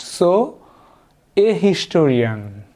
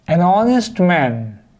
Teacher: h is not pronounced here h remains silent